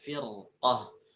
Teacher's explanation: kalau kasrahnya asli tapi setelah huruf ro ada huruf istila yang berharakat fathah seperti firqoh maka pada saat kondisi ini dibaca tebal